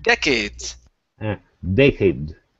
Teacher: the stress is at the very beginning